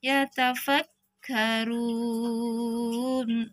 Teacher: Runnya kita pakai yang 4 harakat berhentinya ya. Ada waw sukun diikuti nun yang disukunkan karena waqaf atau mad arid disukun.